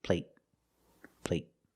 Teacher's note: They're the long a, but the stop t at the end makes the long a little shorter.